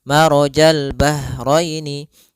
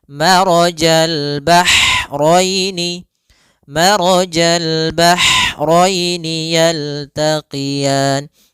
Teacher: Yaitu ha atau bisa kita sebut dengan ha pedas, yaitu adanya aliran nafas yang kita lafalkan dan dia lembut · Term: ha kecil